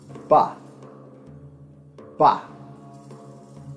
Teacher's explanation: a voiced bilabial plosive, and it is articulated with both lips being pressed together while voicing through the mouth.